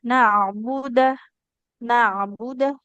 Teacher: jadi ain sukun ini ketika dibaca harus ada aliran suaranya